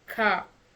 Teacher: So sound ah, for example, in words like car. It's an open again and unrounded vowel sound. So here you open your mouth and widen it to say this word car.